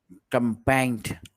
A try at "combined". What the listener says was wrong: Com- not combined, combined. The first one that you said. Not combined, combined. There's an N. Com by N and then D. Combined.